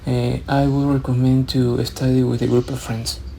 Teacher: here uh the awkward intonation I think really stands out so you're not really varying your tone you're speaking in a monotone